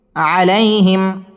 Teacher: মিম সাকিন ইজহারে খাস গুন্না ছাড়া পড়তে হবে। আলাইহিম তয় তয়া জবর তয় জবরের বাম পাশে জজম ওয়ালা ইয়া লিনের হরফ তাড়াতাড়ি পড়তে হবে।